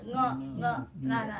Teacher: ङ हे अनुनासिक म्हणायचं. ङ ङ नाकात म्हणायचं